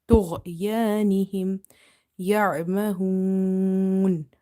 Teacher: Ain is from the middle of the throat. Hoon. Wow is up to 3 alif we will stretch.